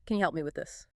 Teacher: And help me links together smoothly, sometimes sounding almost like helmy. The P sound often being very light or blending straight into the M.